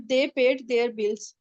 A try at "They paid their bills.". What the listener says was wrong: No, it's not देयर, they paid दियर bills. देखिए, देयर और दियर में थोड़ा सा फर्क होता है प्रोनाउंसिएशन का। देयर का मतलब होता है देयर are टू chairs in the room, देयर are many children in the school. दियर का मतलब पोजीशन होता है, दियर बिल, उन्होंने अपना बिल दिया, ठीक है।